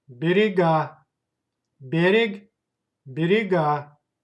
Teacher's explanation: Please pay attention to the stress. Stress goes to last syllable.